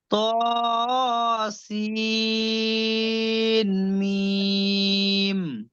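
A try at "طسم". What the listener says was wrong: সিন নয়, সিনটা মিমকে ধরতে হবে। তোয়াসিন।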